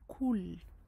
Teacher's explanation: le qaf d'une façon très amincie, ce qui le fait ressembler au final à un kef